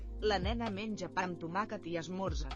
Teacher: Anytime you see words ending with the same vowel sound that starts with the next one, even though they don't put an apostrophe to contract it like they would in French or Spanish, you kind of run the words together. So they're not saying pa they just say pam.